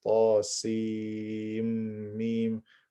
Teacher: the muthaqqal, which is tasim mim, where I merge the sin into the mim.